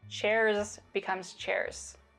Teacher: With devoicing, we use the voiceless equivalent, which is an S. · So the Z sounds at the end of words turn into more of an S sound. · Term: devoicing of word final Z